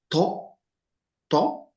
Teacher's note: like tea but it's thick